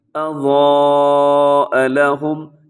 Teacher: ایک تو حرف ضاد موٹا ہے اور ساتھ الف بھی، وہ بھی موٹا پڑا جائے گا، تو الف اور اس کے اوپر جو مد ہے اسے مد متصل کہا جاتا ہے۔